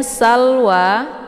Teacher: ada harakat fathah beri tegak yang terdapat di atas huruf wa cara bacanya ini dipanjangkan 2 harokat karena mad thobi'in